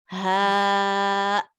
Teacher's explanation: Hamza sukun is the sound of the closing throat.